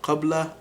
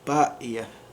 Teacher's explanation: qaf becomes an epiglottal stop